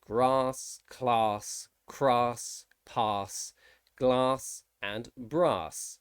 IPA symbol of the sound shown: ɑː